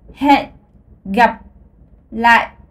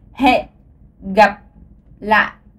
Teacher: les 3 points souscrits, ça veut dire 3 tons très lourds et créés en utilisant votre glotte